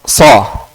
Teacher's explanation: Jadi ini sad, itbaq. Jadi angkat lidah ke atas.